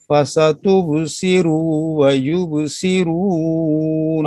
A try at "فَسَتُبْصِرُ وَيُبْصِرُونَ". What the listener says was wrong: را کو لمبا نہیں کریں، فَسَتُبْصِرُ وَيُبْصِرُونَ.